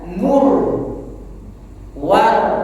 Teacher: Ro yang dibaca tebal. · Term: ro tafkhim